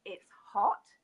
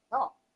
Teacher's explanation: We don't pronounce the H at the beginning of the word. We don't pronounce T in the middle or at the end of the word. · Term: Yorkshire accent